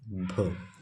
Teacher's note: हिंदी की स्पर्श घोष महाप्राण ओष्ठ व्यंजन है। अब इसमें स्पर्श घोष, महाप्राण, ओष्ठ सारा कुछ पता होना चाहिए, तभी आप इसको कर पाएंगे।